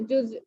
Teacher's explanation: اینڈ میں حمزہ کو جھٹکا دینا ہے